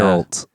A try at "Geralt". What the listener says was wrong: You just had the emphasis wrong. That's all. Geralt.